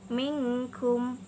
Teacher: contohnya minkum disitu ada nun sukun bertemu dengan huruf Kaf disitu nun sukun dan sukunnya dibaca secara sembunyi atau samar-samar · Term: ikhfa, hukum ikhfa